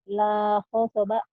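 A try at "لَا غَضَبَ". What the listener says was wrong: Bukan ho tapi itu go. Go.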